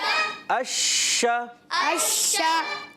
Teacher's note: زبان کا درمیان اور اوپر تالو کے درمیان سے ادا کرتے ہیں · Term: شین